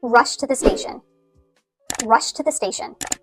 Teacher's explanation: It may still even just sound like rush to the station to you. But I am saying rushed. and it will come across that I'm speaking in the past tense because at least my intention is to have this t ending.